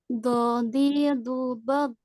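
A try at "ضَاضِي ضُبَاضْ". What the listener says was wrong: hati-hati di huruf botnya tidak dikolok-kolakan.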